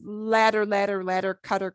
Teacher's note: when it is in the middle anywhere we'll get the little flap like us saying the word ladder